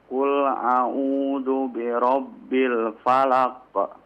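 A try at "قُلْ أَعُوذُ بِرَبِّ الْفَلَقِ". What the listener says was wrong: La, falaq. Langsung dipantulkan Pak. Qafnya.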